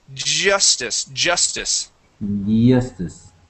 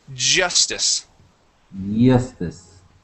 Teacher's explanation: get that vibration that J sound